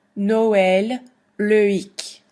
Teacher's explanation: the two vowels should be pronounced separately rather than as a diphthong. A diphthong is when you have two vowels that kind of slide together. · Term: tréma